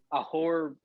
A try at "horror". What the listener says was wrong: Horror. you got to use that second syllable. Horror. The second is important there.